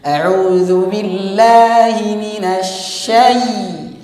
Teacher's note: Di sini huruf ya sifatnya adalah tipis, maka ditarik.